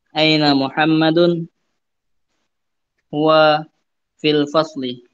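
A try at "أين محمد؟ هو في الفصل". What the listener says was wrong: Naam, ahsanta.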